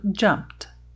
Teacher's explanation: Se antes de você colocar o sufixo, a palavra terminava em algum desses sons fortes aqui que você está vendo, então agora ao acrescentar o sufixo, você vai pronunciar o finalzinho desta palavra como um T